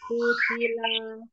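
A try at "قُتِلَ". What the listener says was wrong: Ujung-ujungnya jangan dipanjangkan. Kutila.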